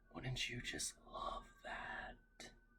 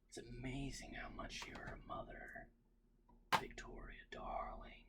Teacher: Always, very breathy at the end. · He always whispers and trails off his sentences.